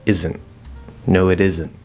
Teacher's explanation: But normally most of the time um, what's going to happen a T at the end with no connection, it just stops. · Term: stop T